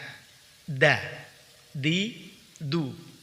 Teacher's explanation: ujung lidah dari arah punggungnya menempel pada pangkal 2 gigi seri atas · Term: huruf dal